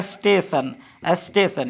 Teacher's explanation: टी के बाद अगर ION रहे तो टी का ध्वनि तालव्य स जैसा होगा, यानी 100 के जैसा होगा।